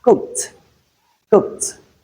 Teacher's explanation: In that word, the ed comes after the voiceless sound k. Hence, we realize it as t. Then in hissed, hissed, the ed comes after s, which is a voiceless sound.